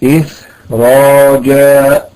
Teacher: هنا إخراجا تفخم أكثر من أجل تفخيم الراء بعدها